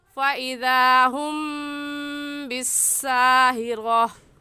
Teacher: فإذا ہم پر غنہ کریں گے کیونکہ میم ساکن کے بعد با آ گیا ہے، اور یہ قاعدہ ہم پڑھ چکے ہیں کہ میم ساکن کے بعد با آ جائے یا میم ساکن کے بعد میم آ جائے تو اس میم ساکن پر ہم غنہ کرتے ہیں، اور غنہ ایک الف کی مقدار ناک میں آواز چھپانے کو غنہ کہتے ہیں۔